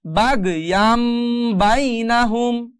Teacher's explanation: ইয়ান থাকবে না, এখন হয়ে যাবে ইয়াম